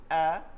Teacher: হা এবং আইন একই মাখরাজ, কণ্ঠনালীর মধ্যখানে নিয়ে যাইতে হবে, চাপাই আওয়াজটাকে ভিতরে চাপাই নিতে হবে